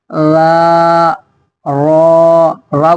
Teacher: را کو کہیں منہ بھر کے، را زبان اوپر اٹھا دیں گے